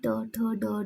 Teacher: फिर मूर्धन्य, मूर्धन्य मतलब अपर रूफ ऑफ द माउथ